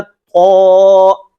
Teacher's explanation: تو کو ادا کرتے وقت زبان کی جڑ اوپر کو اٹھ گئی، اس لیے کہ یہ حرف موٹا ادا ہوگا۔ تو اس کو ادا کرتے وقت نمبر 1 تو زبان کی جڑ بھی اٹھے گی، موٹا ادا ہوگا، اور ساتھ ہی ساتھ کیا ہے کہ موٹا ہونے کے ساتھ ساتھ اس کو ہم نے سختی کے ساتھ تھوڑا سا پڑھنا ہے۔